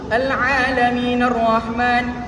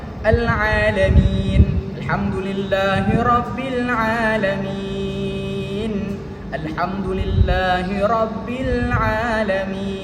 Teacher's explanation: Apabila kita wakafkan dia, maka ia menjadi mad arid sukun, dan kita hendaklah panjangkan dia 2, 4 ataupun 6 harakat. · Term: mad arid li sukun